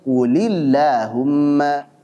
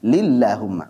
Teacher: Maka lam pada Allahumma dibaca tipis pula.